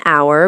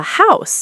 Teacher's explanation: So it's an hour, but a house, because we hear the H in house.